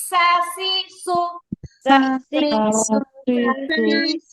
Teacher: জিহ্বার আগা নিচে দুই দাঁতে পেট ও আগার সাথে লাগিয়ে, আর সিন বলার সময় একটা শীষের মতো আওয়াজ হয়